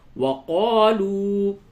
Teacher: یہ جو الف ہے یہ مدہ ہے، اور یہ واو مدہ ہے، دونوں جگہ پہ تھوڑا سا کھینچیں گے